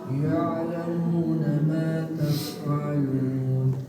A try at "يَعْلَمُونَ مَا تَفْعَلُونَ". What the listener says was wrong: یہ تفعلون پہ غلطی ہوتی ہے، ٹھیک ہے، فا کو ہلا دیا جاتا ہے ان کو پڑھتے پڑھتے. تفع نہیں کرنا، تفعلون پڑھو سارے.